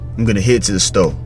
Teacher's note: going to is not pronounced going to in the American accent it's GNA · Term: dropping or merging sounds